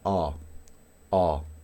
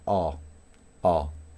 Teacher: Esta es una A que es bien abierta, es decir, mi lengua reposa y abro la boca A. A, ¿sí? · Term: A bien abierta